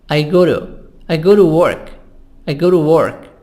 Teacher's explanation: between two vowels I make it soft D